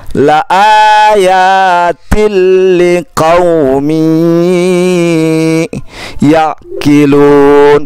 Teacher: Kemudian ada tanwin bertemu dengan huruf ya. Ya, dibaca dengung karena tidak termasuk dalam kelompok yang tidak dengung di sebelah kiri.